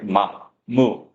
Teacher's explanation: 이게 입술이 붙었다 떨어진단 말이죠. 자, 이런 소리, 두 입술이 닿았다 떨어지는 소리